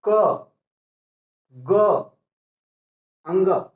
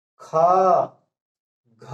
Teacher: इनको बोलने में थोड़ा समय लगता है, उन्हें हम अल्प प्राण कहते हैं, और जिनको बोलने में अधिक समय लगता है तो उन्हें हम महाप्राण कहते हैं। जैसे देख लीजिए, विश्वास न पड़े तो बोली, जैसे क, ग, अंग, ये देखो ख, घ, देर लग रहा है, इसीलिए हम पहचान लेंगे।